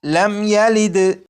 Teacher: جب میم ساکن کے بعد یا ہے تو اس میم ساکن میں بھی غنہ نہیں کریں گے